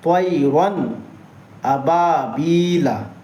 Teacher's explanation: اب آئیے، تنوین یا نون ساکین کے بعد حروف حلقی آوے تو نون کو ظاہر کر کے بغیر غنہ کے جلد پڑھیں گے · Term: اظہار